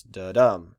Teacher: for an iamb, you feel this sort of rhythm in the text where the second syllable is stressed the most. So you have this da-dum sort of feel.